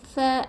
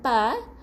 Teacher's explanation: Fa bukan pa, huruf fa angin keluar.